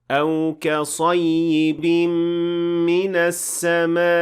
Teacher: The stress in this case functions as a way to show that there is a hamza at the end of the word. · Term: nabr